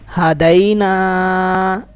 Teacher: ہدینا یا لین اس کو لمبا نہیں کرنا، نون کے ساتھ الف مدہ اس کو لمبا کرنا ہے.